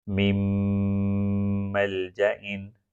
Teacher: اب اس کو بھی لکھا جائے گا من ملجئن، لیکن نون سکون کے بعد میم آ گیا تو یہاں پر نون سکون کو میم میں داخل کیا جائے گا اور شدہ کا سائن لگا کر غنہ کا رول بھی اپلائی کیا جائے گا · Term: ادغام